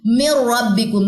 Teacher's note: نون ساکن کے بعد را ادغام بلا غنہ، یعنی کہ ہم یہاں پہ غنہ نہیں کریں گے، جسٹ مرجنگ ہوگی